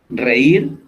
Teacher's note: Reír, aunque no termina en N o S, se le coloca la tilde en la I y son palabras agudas porque el golpe lo estamos dando en la última sílaba